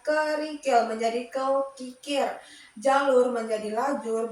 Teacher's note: Kemudian yang keenam itu ada metatesis perubahan urutan bunyi fonem pada suatu kata sehingga menjadi dua bentuk kata yang saling bersaing.